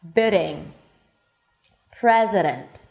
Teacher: So this really light tap, not a long trill, not r, but this really light tap is exactly that D sound between two vowels in the middle of the word when it's unstressed